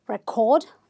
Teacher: this is a verb so you're stressing syllable number two